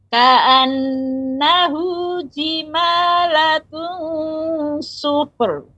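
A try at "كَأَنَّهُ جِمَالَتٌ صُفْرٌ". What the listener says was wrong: Ini juga fa-nya diberikan fa sifat fa-nya kemudian baru ra. Tidak langsung sufur. Sufur. Namun sufur agak lambat jadi terdengar seperti lambat karena dia kita berikan tidak dipantulkan fa-nya. Ka'annahu jimalatun sufur.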